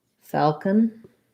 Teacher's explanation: it has an A vowel, first syllable stress